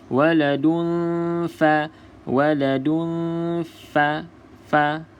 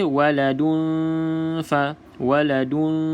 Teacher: juga cuma cara nak sebut ataupun cara ikhfa tu adalah dengan kita samar-samarkan kita tidak Terus masuk dalam huruf Fa dan juga tidak bunyi Nun terus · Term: bacaan Ikfa